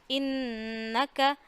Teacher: آپ نون کی آواز ناک میں لے جائیں اور 1 الف جتنی ٹھہرا لیں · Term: گننا